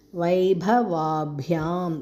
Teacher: வா நெடில், அடுத்தது பாவும் குறில்